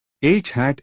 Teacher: H voiceless fricative glottal